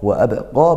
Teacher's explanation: ba sukun dipantulkan qalqalah sugro.